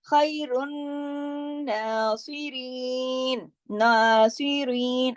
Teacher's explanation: ہم نے نا کو 2 حرکات کھینچا · پہلے نون کو 1 دفعہ پڑھا رن، اور پھر پڑھا نا، 2 دفعہ پڑھا گیا نون. یہاں پر ایک رول تو یہ ہو گیا تشدید کا. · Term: کھڑی زبر